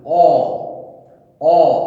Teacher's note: অ উচ্চারণ করলে কিন্তু পুরোটা খুলছে না, অ, অ কিছুটা রয়ে যাচ্ছে, আ পুরোটা, কিন্তু অ কিছুটা রয়ে যাচ্ছে। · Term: অর্ধ বিবৃত স্বর